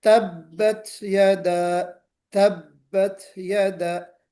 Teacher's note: ये जो आवाज आती है हल्की सी, है ना, हल्की सी जो हवा निकलती है, ये असल में ब्रीथ होती है। तो इसको हमें इस अंदाज में पढ़ना है और कलकला नहीं करना है। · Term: हम्स